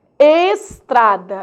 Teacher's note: Estrada, eu não falo es, eu falo ex